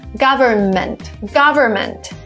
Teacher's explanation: Here we don't pronounce the N in the middle.